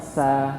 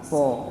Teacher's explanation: Sejajar dengan gigi bawah. Tapi bedanya apa antara sa dan so, sin dan sod? Itu bedanya punggung lidah ini keangkat.